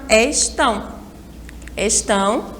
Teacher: aí a gente consegue identificar rapidamente né porque está acentuada então a sílaba mais forte é a última